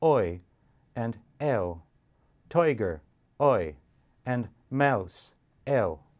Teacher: They changed from simple vowels to diphthongs, with a schwa as the first element